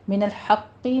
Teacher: قوف کو پر پڑھیں گے اور تشدید ادا کرتے ہوئے تھوڑا سا رک کے سختی سے کسرہ کی آواز ادا کریں گے